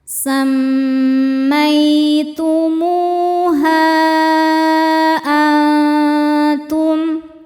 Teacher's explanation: Hukumnya adalah ikhfa hakiki aqrab karena nun sukun bertemu dengan huruf ta. Cara bacanya nun disamarkan ke ta disertai dengungan. Ini dengungnya sedikit karena tak makhrajnya dekat dengan nun ya.